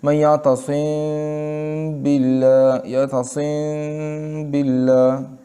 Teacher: شفوی یعنی ہونٹوں میں ہم نے میم کو تھوڑا سا چھپا لیا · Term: اخفاء شفوی